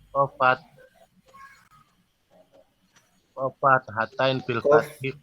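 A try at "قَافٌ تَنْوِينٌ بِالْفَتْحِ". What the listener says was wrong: Ya, insyaallah terbawa nama fathatan. Qaf tanwin bil fathi.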